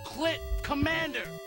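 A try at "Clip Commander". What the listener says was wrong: Just try to pronounce the P, even a little bit, it'll be better.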